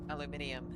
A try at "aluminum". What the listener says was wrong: You're still saying aluminium. Em. Of course I can't pronounce it because I know how it's spelled. It's aluminum.